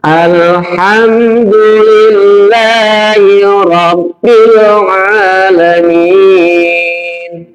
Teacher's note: Idhar safawi itu adalah berarti bunyi mimnya jelas di bibir.